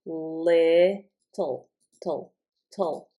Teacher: With the T, the sides of my tongue are touching my teeth. With the L, they are not. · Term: L sound